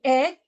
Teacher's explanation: the front part of your tongue is mid height in the mouth lips are spread facial muscles are relaxed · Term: short e